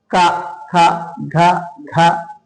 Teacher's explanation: కంఠంకి నాలుక లోపల టచ్ అవుతూ ఉంటది కాబట్టి ఆ అక్షరాలని ఏమంటారు కంచ్యాలు అంటాం